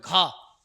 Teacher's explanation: रहे कंठ से तो मूर्धा से है नहीं कंठ से है घ का उच्चार कंठ से हो रहा है तालू से भी नहीं तालू तलवा से बोला जाता है मिलाकर · घा का उच्चारण कंठ से हो रहा है, तालु से भी नहीं।